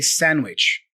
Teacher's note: normally we don't pronounce the D for sandwich. You know, we we drop the D and we just say sandwich.